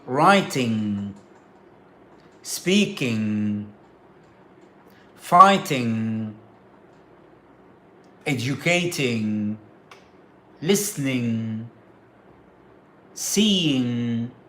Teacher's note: the ing at the end of the verb which is a nasalized what's called nasalized sound and it comes from the nose